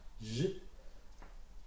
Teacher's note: c'est une fricative, donc c'est un frottement de l'air, J, mais il est dans le fond de la bouche, il ne sort pas, contrairement au V, qui est le vent.